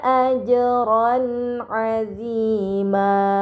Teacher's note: Dan terakhir pada kata ajran azima terdapat harokat fathahtain bertemu dengan huruf ain, ini dinamakan izhar halqi, maka fathahtain dibaca secara jelas